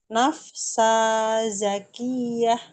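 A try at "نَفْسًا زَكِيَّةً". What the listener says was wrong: Dia ada tanwinnya juga di sini. Kurang kurang tanwin nafsan zakiah.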